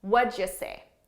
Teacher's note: i'm taking what did you and these three words sound like one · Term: linking and reducing